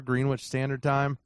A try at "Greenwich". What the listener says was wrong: Greenwich. It's pronounced Greenwich, but yes. you don't pronounce the W.